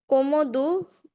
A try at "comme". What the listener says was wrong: কমো না কম কমো মানে হাফ কম